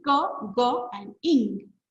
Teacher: Velar sounds are produced here, the velum, okay, or soft palate. The back of the tongue touches the soft palate, and thus the sounds are produced.